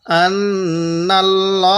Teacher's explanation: এই লামটা একটু মোটা করে পড়ব, কারণ পোর করে পড়ব, কারণ আল্লাহ শব্দের লামের পূর্বে জবর থাকলে লামটাকে মোটা করে পড়তে হবে